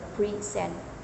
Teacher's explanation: the word present as a verb meaning to s or give the stress is on the second syllable preent these variations and stress can even change the meaning of